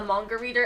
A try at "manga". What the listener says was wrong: Manga. You said like with an O. Manga.